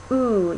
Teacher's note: so just like e but if you're moving the so that the highest part of your tongue is up near the back of your mouth ooh you get a vowel like ooh e o e oo